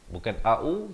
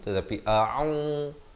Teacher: Kita bacakan lafaznya dengan betul, pastikan hamzahnya itu dipangkal kerongkong. Ain di pertengahan kerongkong, dua harakat berbari dhammah.